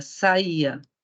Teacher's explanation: Temos um i tônico perto de um a, só que não na mesma sílaba.